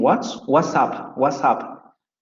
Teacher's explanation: Característica de esta variante del inglés británico. Notice that there is no T in what's up